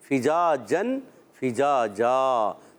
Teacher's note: الف مدہ ہے، ایک الف کھینچ کر ادا کریں گے، اور دو زبر کی تنوین کو الف سے بدل دیں گے، فجاجن، فجاجا، دو زبر کی تنوین کو الف سے بدلیں گے اور اس کو کہتے ہیں وقف بالابدال مع الالف.